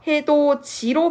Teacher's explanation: 끝소리 디귿이 모음 이랑 만나면 지읒으로 바뀌어서 즈 발음으로 바뀌어서 이제 구개음이 되는 거죠. 예시를 보시면 해도 디가 아니라 해도 지로 바뀝니다. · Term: 구개음화